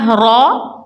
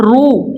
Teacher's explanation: اب پیچھے ہم نے پڑھا ہے کہ را کے اوپر جب زبر یا پیش آئے تو اس کو پر پڑھا جاتا ہے اور را زیر آ جائے را کے نیچے تو اس کو باریک پڑھا جاتا ہے. زبر کے ساتھ را پیش کے ساتھ رو یعنی بھری ہوئی آواز آئی ہے